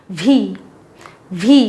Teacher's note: व्हीचा उच्चार आपण मराठी मंडळी किंवा एकूणच भारतीय मंडळी व्ही आणि डब्ल्यूचा उच्चार करतच नाही किंवा चुकीचा करतो. व्हीचा उच्चार करताना आपले वरचे जे दात आहेत ते खालच्या ओठांवरती आणायचे आणि हवा बाहेर सोडायची.